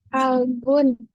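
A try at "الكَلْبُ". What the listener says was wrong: tidak ada unnya, tidak ada n-nya. Al kalbu. Kalau ada al, tidak boleh digabung sama n di akhir. Tidak boleh.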